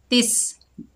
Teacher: सीन जो है सख्ती और सीटी वाला हरूफ है